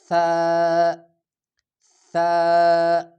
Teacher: زبان کی نوک معمولی سی دانتوں کے درمیان نکال کر آسانی کے ساتھ